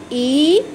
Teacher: अब ये जीव का मध्य भाग जो होता है हमारे तालु को टच करता है , बोलिए मेरे साथ ई तो मध्य भाग जाएंगे दोनों, ये